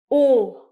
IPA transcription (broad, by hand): ɔ: